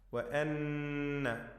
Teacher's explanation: നൂൻ മുഷദ്ദദ ഷദ് നൽകപ്പെട്ട നൂനിനെ മണിക്കണം.